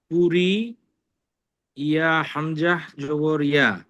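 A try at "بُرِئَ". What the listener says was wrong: শুধু হামজা জবর আ বললে হবে, হামজা জবর আ।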